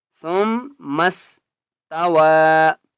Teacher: هو الذی خلق لکم ما فی الارض جمیعا ثم استوى، سا میم پہ ثم، میم کے اوپر تشدید غنہ کریں گے، میم کو دوبارہ سین کے ساتھ ملائیں گے · واو مد کھڑا زبر واو کے اوپر چھوٹی مد ہے، تین الف کی مقدار کھینچ کر پڑھیں گے، اس یا کو نہیں پڑھیں گے۔